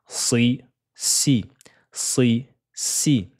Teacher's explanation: C'est très important, surtout la lettre Sod qui est juste ici avec sa kasra, ça donne le son si. Si, c'est une lettre emphatique à ne pas confondre avec la lettre Sin qui, elle, est amincie. Elles ont le même point de prononciation, faites attention, sauf que une, la langue, l'arrière de la langue va gonfler vers le fond du palais et l'autre, la langue sera au repos, c'est une lettre amincie.